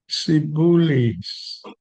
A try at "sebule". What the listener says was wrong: Now you see, you're pronouncing S as T. With A, not E. It's A.